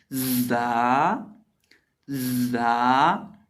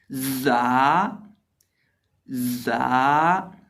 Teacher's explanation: हम अपने ऊपर वाले और नीचे वाले दांतों को आपस में मिलाकर जोड़कर एक ज़ोर से आवाज़ पैदा करेंगे। वो आवाज़ पैदा होगी जा की आवाज़ और जा के अंदर सीटी होगी। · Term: सीटी वाले हरूफ